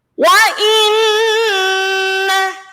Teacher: Wa inna. Nah, di situ ada nun tasydid maka dibaca mendengung